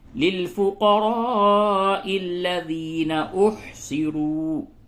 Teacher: اور را اس کو پر کیجئے، را کے اوپر پیش ہے، اسے پر کیجئے